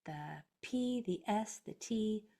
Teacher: the P the S the T voiceless no vocal cords are used